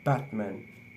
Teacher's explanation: The first syllable, bat, in this word is a stressed syllable, so it will be longer and higher in pitch than the second syllable, man. So when we read it, will be Batman.